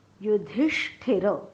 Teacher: पोटफोड्या श म्हणताना जीभ टाळ्याकडे जाते पण टाळ्याला चिकटत नाही, आणि ठ म्हणताना मात्र जीभ टाळ्याला चिकटते